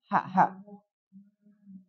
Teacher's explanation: ha harus benar-benar ha bersih dari tengah